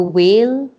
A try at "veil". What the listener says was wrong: and you have to work on the V. You said whale. You said whale.